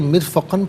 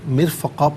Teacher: اسے مرفقاً پڑھیں گے، وقف کی صورت میں مرفقا پڑھا جائے گا، دو زبر کی ترمیم وقف میں الف سے چینج ہو جاتی ہے